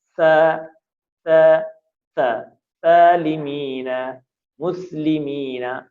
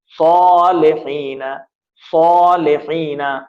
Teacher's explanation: سین ہمیشہ پتلی آواز میں ادا ہوتا ہے، س س س سالمین مسلمین، لیکن جو صاد ہوتا ہے وہ موٹا ادا ہوتا ہے